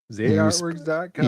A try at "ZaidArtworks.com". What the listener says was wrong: Yeah, but you have to put a T in art. You have to pronounce the T. Yeah, you need to pronounce it.